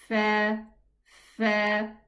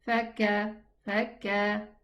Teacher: We need to hear the letter F by pressing a little bit so that the whispering sound is heard so that the letter is totally pronounced.